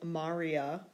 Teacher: because the second-to-last syllable is short the accent goes on the first syllable